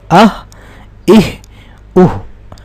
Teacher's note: تو ہا کا جو ساؤنڈ ہوگا وہ اقصی حلق سے نکلے گا، یعنی حلق کے سب سے نچلے حصے سے جو سینے کے ساتھ، سینے کے قریب ہوتا ہے، سینے کے ساتھ ایسے کر لیں سینے کے ساتھ ملا جلا ہوتا ہے، ٹھیک ہے.